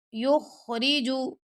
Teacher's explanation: یہاں پہ را کو باریک پڑھیں گے، خا کو موٹا